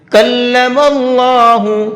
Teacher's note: اللہ کے لام کو یہاں پر پر کر کے پڑھیں گے